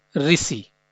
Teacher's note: ऋ का जो उच्चारण होता है हिंदी भाषा में, वो री की भांति होता है।